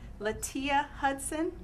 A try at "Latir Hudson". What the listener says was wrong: Well, you're close. It's an R at the end, so you have a tear. About crying. Again, my name is Latir Hudson.